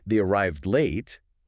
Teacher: they arrived late, with a falling intonation, that's a statement